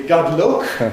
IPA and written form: ˈgʌd ˈlʊk (Good luck)